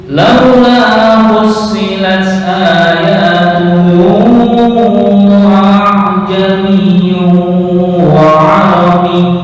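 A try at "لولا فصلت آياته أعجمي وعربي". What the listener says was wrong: Masih kelihatan tahqiq, belum masuk ke tashil. Jami.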